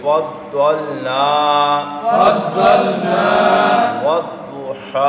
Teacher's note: ضاد مستعلیہ ہے، پر پڑھیں گے